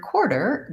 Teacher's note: and which syllables are unstressed and shorter in the word quarter the stress is on the first syllable core and we hold that long and the second syllable der is short and reduced